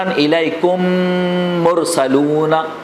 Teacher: میم ساکن کے بعد میم آئے تو دونوں کو ملا کر غنہ کے ساتھ مشدد ادا کریں گے